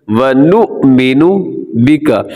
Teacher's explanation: ایک جھٹکے کے ساتھ اس کو پڑھیں گے، کیونکہ حمزہ ہمیشہ جھٹکے سے پڑھا جاتا ہے